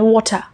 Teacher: In British English, मतलब जो अंग्रेजी लंदन में बोला जाता है, R at the end is soft or silent. London में जो भी वर्ड्स R से ख़त्म होता है उसे हम प्रोनाउंस ही नहीं करते।